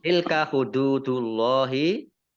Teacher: Tilka hududullahi dal domah wawu sukun mat tobi'i. Allahnya dibaca tebal karena harokat di depannya domah.